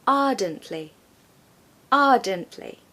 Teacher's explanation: we don't pronounce the R, especially if it comes in the middle of the word or at the end. We generally don't tend to say it.